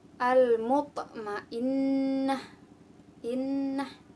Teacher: Setelah itu ada hukum bacaan gunnah, yaitu karena ada huruf nun tasydid, cara membacanya dengung